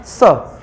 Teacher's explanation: तो दंत का मतलब जब स बोलेंगे तो जिह्वा दांत के पिछले वाले फिर हिस्से पर टच करके फिर सितकार की ध्वनि निकालिएगा